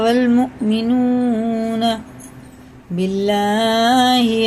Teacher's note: اللہ کا لام زیر سے تو باریک پڑھیں گے